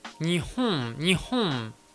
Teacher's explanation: ce m japonais est beaucoup plus nasal, notamment la voyelle qui vient avant est un peu nasalisée